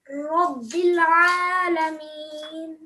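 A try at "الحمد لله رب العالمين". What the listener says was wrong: زیادہ لمبا ہو رہا ہے آپ کا. الحمد للہ رب العالمین. آپ نے کوشش کرنا ہے اپنی مدود کو تھوڑا سا چھوٹا کرنا ہے.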